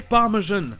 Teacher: le mot français parmesan qui se prononce en anglais parmejan comme un j français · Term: hyperforeignism